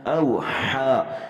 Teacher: یہاں پہ ہم نے حا کو حلق سے ادا کرنا ہے